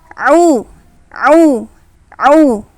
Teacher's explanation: Ini huruf ain keluarnya dari tengah tenggorokan. Nah, jadi agak naik sedikit makhrajnya atau tempat keluarnya.